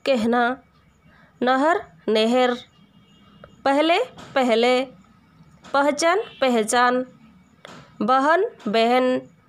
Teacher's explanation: ह से पहले जो अक्षर है इसके ऊपर एकार जैसा, इसके ऊपर जैसे एकार लगा हुआ है, ऐसा ही समझ के उच्चारण करना पड़ता है। तो ह से पहले एकार का उच्चारण आ जाता है